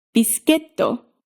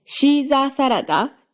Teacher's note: If, on the other hand, the highest syllable is elsewhere, then you follow the default pattern. First syllable low, rest of the syllables high, until you hit the downstep, at which point you come back down. So in biscuito, you go low, high, high, low.